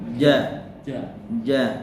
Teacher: cuman bedanya itu J. tidak ada nafas yang mengalir, ya, jadi lebih padat ya